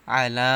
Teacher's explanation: লামের উপরে খাড়া জবর, তাই এখানে একালিফ টেনে পড়তে হবে।